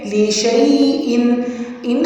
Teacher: ان حمزہ کی تنوین کے آگے الف ہے، الف کے نیچے زیر ہے تو یہاں پہ ہمیں اظہار حلقی کرنا ہے